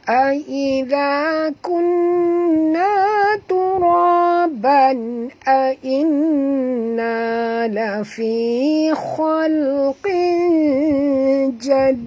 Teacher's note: tanwin baris 2 di bawah bertemu dengan jim, masukkan bunyi tanwin ke dalam jim disertai dengung dua harakat. Ikhfa haqiqi.